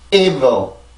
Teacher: 이렇게 해서 발음을 만들어주면 되고 그리고 뒤에 있는 지금 순수 음절의 시작도 V 발음이잖아요. 이러면 아까 전에 강세 음절의 시작에서 나온 V보다는 공기의 양이 셀 수는 없지만 전혀 공기가 나오지 않고 발음될 수는 없어요. 왜냐면 어쨌든 여기도 작은 리듬이 들어가 있기 때문에 작은 리듬을 만들어주기 위한 그만큼의 공기는 반드시 나와줘야 돼요.